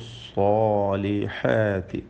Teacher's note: صاد التفخيم ഉണ്ട്, പെരുപ്പിച്ച് പറയണം